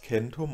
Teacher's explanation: aber das k hat sich zunächst zum ch-Laut und dann weiter zum h verschoben